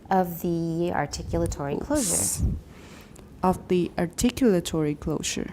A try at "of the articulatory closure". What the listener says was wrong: Oh, 不要那么高. Closure is still a content word.